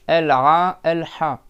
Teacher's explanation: Donc le Ha et le Ain, c'est au milieu de la gorge.